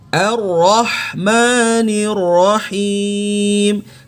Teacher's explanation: Nah, ini H-nya yang tengah tenggorokan, wastul halqi. Ar-Rahmanir Rahim.